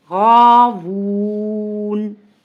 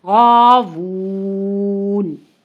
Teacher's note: اب اس کو ہم نے غاوونا تھا تو وقف کیا تو تھوڑا کھینچ کر لمبا کر کر پڑھا ہے